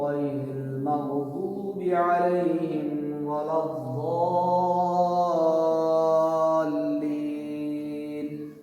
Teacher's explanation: غین کو بھی موٹا پڑھا ہم نے، ضاد کو بھی موٹا پڑھا